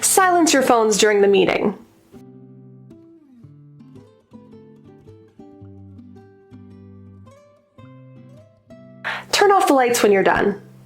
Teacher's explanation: for commands you'll notice that it's typically a very slow falling intonation meaning usually we start with the highest pitch or the the